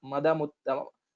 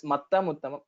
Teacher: because of regional influence, the takara is kind of sounding like dakara